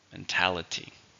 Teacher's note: 4 syllables, but the stress is on the second syllable.